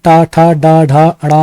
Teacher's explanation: टा वर्ग, जिसमें टा ठा डा ढा अड़ा आते हैं, और रा तथा सा षटकोण वाला जो सा है ये मूर्धन्य ध्वनियां कहलाती हैं